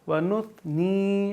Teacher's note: آگے ثا میں سیٹی کی آواز نہیں آئے گی۔